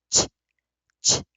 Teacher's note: add a stop to it by hitting my tongue against the back of my teeth, ch, ch, then you have your CH. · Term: affricate